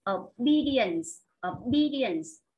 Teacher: Lúc này trọng âm nó rơi vào âm thứ 2 nhé các bạn.